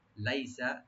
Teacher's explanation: লাই এখানে হরফে লিন open করে পড়বেন, সিন ওপেন থাকবে তবে টান হবে না।